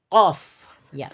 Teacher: huruf hijaiyah qaf itu adalah huruf lisan ya, yang berada di pangkal lisan bertemu dengan langit-langit bagian lunak